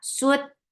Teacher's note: Na su for the circle your lips and attach with ta, sut, and ta is shadid letter. There is no flow of sound. The sound will be cut off very sharply. Sut, and then fatha, the sound is very short.